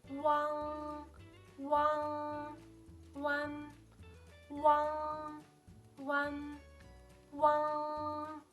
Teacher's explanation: one более широкая и носовая